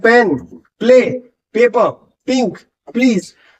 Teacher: पी के बाद आपको लिप्स बंद होते हैं तो उनको खोलने के लिए आपको अपने होठों को खोलना पड़ता है। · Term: पी साउंड